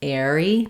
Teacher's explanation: So you can think about it like airy or air-y, but really, anytime we have an R between two vowels, it's going to connect into both. So you really want to work on airy, airy, being able to link those sounds, making your air sound as well as your re sound with one R, airy.